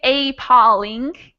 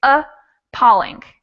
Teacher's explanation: sound changes a little bit so like this this first a if we don't stress the first a instead of sounding like a real a it sounds like uh so instead of saying apolling a polling i say a polling